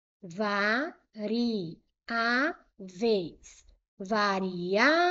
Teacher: A penúltima é a mais forte. É uma palavra paroxítona.